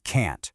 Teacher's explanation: It's sharp. It's clipped. It stops abruptly with that hard T sound at the end. Actually, emphasizing that clipped T is exactly how native speakers ensure you know they are setting a limit.